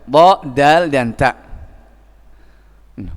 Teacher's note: Minhu ay min tarfil lisan, wa min ulya tsanaya, dari gigi tsanaya yang atas, ujung gigi seri yang atas ini.